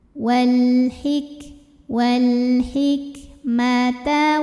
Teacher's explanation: untuk Kaf yang sukun anginnya keluarnya belakangan setelah suaranya